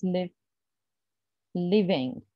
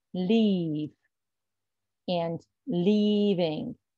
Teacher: the only difference here is just the length of the sound the length of the vowel sound